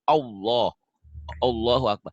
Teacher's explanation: Kalau tebal kan ada seperti ada O-nya.